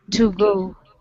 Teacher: So we have the schwa sound in that to.